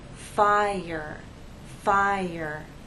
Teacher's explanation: If you listen closely, there is the Y sound that connects the 2 vowels.